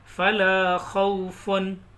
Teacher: उनकी तनवीन की, तो उसको ज़ाहिर करेंगे, गुन्ना करके नहीं पढ़ेंगे।